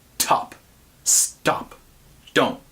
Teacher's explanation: with a puff of air in top without it in stop and barely any sound at all in don't